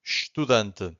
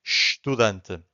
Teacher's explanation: the only thing that you can hear from the first syllable it's a sh right so I'm saying stent so this happens because 99% of